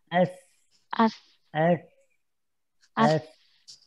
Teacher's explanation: rasakan ujung lidahnya nempel dengan ujung gigi seri atas ya